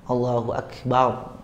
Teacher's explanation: Bapak kalau udah belajar kan, tebal ro-nya, Allahu Akbar, gitu kan? Udah baca tafkhim karena ro sukun sebelumnya harokat fathah.